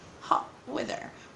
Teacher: We don't pronounce the letter T, or we just replace it with what we call Hamza in Arabic